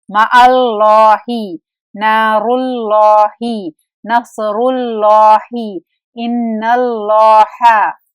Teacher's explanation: अल्लाह के लाम से पहले हरफ मफ्तूह यानी जबर या हरफ मदमूम यानी पेश हो तो लाम मुफख्खम मोटा पढ़ा जाएगा